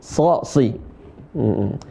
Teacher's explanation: huruf sha termasuk di antara huruf isti'la, kemudian huruf itbaq, tebalnya kebangetan, ya. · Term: huruf shad